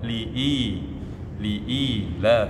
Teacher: Jadi setiap ada huruf hamzah bertemu huruf mad, baik itu bertemu alif ketika dia fathah, kasrah bertemu ya sukun, dan ketika hamzah itu berharakat dhamma dan bertemu waw, maka dia namanya mad badal, ya, mad badal, pengganti dari huruf hamzah. Ya. Panjangnya 2 harakat